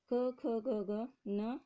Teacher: क, ख, ग, ग, न, ये क वर्ग से आते हैं और इनको बोलने के लिए हमें कंठ से ध्वनि निकलती है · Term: कंठ व्यंजन